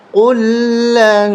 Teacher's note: قاف لام پیش قل، لام نون زبر لن، قل لن، یہاں اخفا ہوگا، ناک میں آواز چھپا کے پڑھیں گے